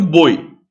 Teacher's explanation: Não, tem uma vogal, que é o O é vogal, e o I é semivogal. Isso aqui é um ditongo decrescente, em que o som do O é mais forte. Semi significa metade, como se fosse metade de uma vogal.